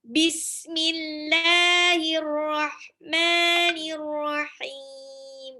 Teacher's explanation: Nah, itu ha-nya harus tipis.